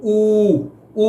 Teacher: ਊ ਜਦੋਂ ਬੋਲਦੇ ਆ ਤੇ ਜੀਭ ਦਾ ਪਿਛਲਾ ਹਿੱਸਾ ਜਿਹੜਾ ਆ ਉਹ ਤਾਂ ਨੂੰ ਚੱਕ ਹੋ ਜਾਂਦਾ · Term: ਪਿਛਲੇ ਸਵਰ